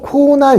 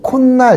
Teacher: 모음으로 끝나고 초성이 니은 미음이 오면은요. 자, 없던 니은 발음이 생겨요.